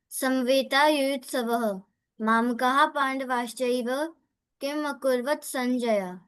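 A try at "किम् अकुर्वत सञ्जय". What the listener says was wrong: See, Akurvata. Okay, this is a full ta. Akurvata. Ta. See, you have to have the akara.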